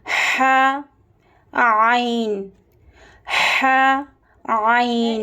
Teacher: درمیانی حلق یعنی مڈل تھروٹ، یہاں سے ح اور عین ادا ہوتا ہے